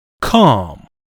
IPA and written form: kɑːm (calm)